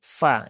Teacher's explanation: suara f itu berubah menjadi P